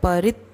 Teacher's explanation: र के ऊपर आघात है तो परित्यागी तो अगला जो वर्ण है जोड़ के बोलना है